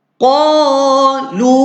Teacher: Qa satu ayunan. Lam jumpa dengan dam baris di hadapan. Lu munculkan mulut jumpa dengan waw.